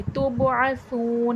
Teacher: सा वाव पे सू, वाव मद्दा है, थोड़ा खींच के पढ़ा जाएगा।